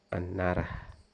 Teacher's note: ketika bunyi t dalam kata antara berubah menjadi n karena pengaruh bunyi n di dekatnya sehingga antara diucapkan sebagai anara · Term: asimilasi fonemis